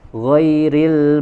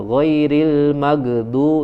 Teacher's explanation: malah ada yang mantul ghairil maghdu ya itu jadi siddah namanya padahal huruf ghoin itu harus dia sifatnya rukhwah mengalirkan suara